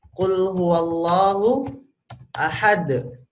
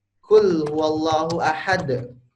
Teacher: Huruf qaf ini terletak di lidah paling ujung bagian belakang.